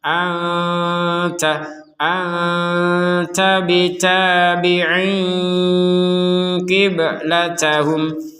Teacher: Nun sukun bertemu ta ini maka kita membacanya dengan samar.